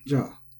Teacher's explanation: is high-low, ja, as many interjections are